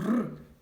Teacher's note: звук р - це твердий приголосний